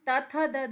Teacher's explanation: दांत के पीछे जीभ लगती है